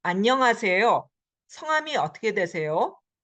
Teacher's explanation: Notice that when there's question, the yo goes up.